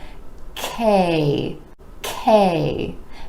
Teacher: the consonant is an air puff sound meaning it's made with a tiny puff of air and you want to make sure that K gets the puff · the back of the tongue is rising up towards the palate k now the consonant is an air puff sound meaning it's